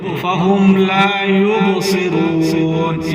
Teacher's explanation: با ساکن ہے، با پر قلقلہ کریں، یوبو فَهُمْ لَا يُبْصِرُونَ، یعنی ہلا کر پڑھیں با کو.